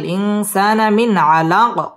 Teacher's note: ইজহার গুন্না ছাড়া স্পষ্ট করে পড়তে হবে।